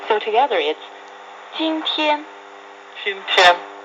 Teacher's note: 今 the first tone and 天 also the first tone.